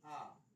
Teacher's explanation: মধ্যস্থ বা স্বাভাবিক স্বর আসলে ঠোঁটটা স্বাভাবিক থাকে তাই তাকে স্বাভাবিক স্বর বলছে। আর মধ্যস্থ মানে ঠোঁটটা গোল হচ্ছে না আর প্রসারিত হচ্ছে না, মাঝামাঝি অবস্থায় থাকে, তাই এটাকে মধ্যস্থ বা স্বাভাবিক স্বর বলা হয়। · যেমন আমরা যখন চুপচাপ থাকি মুখটা একটু খুললেই আ বার করা যায়, আ, ঠোঁটটা গোলও হবে না, ঠোঁটটা প্রসারিতও হবে না। কিন্তু এ বললে একটু ঠোঁটটা প্রসারিত হয়ে যায়।